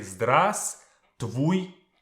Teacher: As you can see, V is not pronounced.